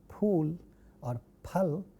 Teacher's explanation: The initial sounds are bilabial.